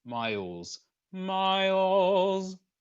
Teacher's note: we want to make sure that we produce the Z sound only and ensure that the phonation and the airflow stop at exactly the same time. So we want to stop the air leaving our lungs and the phonation here in our vocal folds at the same time.